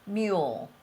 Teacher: the letter l often is so noisy that sometimes it almost sounds like it's another syllable